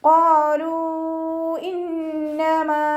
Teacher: ഖാഫ് ഇസ്തിഅലാന്റെ ലെറ്ററാണ്. തഫ്ഹീം ചെയ്തിട്ട് ഉച്ചരിക്കുക. ലാമിൻ്റെ കൂടെ മദ് വന്നു.